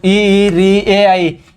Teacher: ई, री, ए, आई ये जीवा के अग्र भाग से बोला जाता है